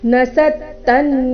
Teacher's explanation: ದು ಮೇಲೆ ಆಘಾತ ಕೊನೆಗೆ ತೇ ದೀರ್ಘ